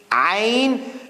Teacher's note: this is like an ah, but from deep inside the throat.